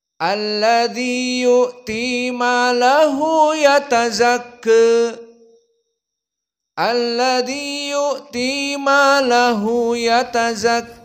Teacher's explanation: qiraah Abu Amr albashri dengan dibacakan Al imalah assugra di akhirnya